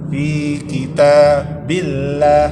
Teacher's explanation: Tipis karena didahului baris bawah. Billah tipis.